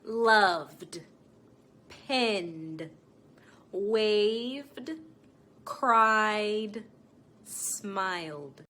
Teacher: these are usually voiced sounds meaning you engage your vocal chords meaning if i placed my two fingers on my neck my vocal cords would vibrate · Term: voice sounds